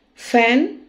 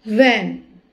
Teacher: F is a voiceless labiodental fricative. V is a voiced labiodental fricative. Upper teeth touch lower lip.